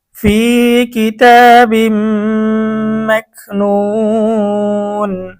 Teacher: মদের হরফের পরে ওয়াকফ করার কারণে মধ্যে আরজি 3 আলিফ টেনে পড়তে হবে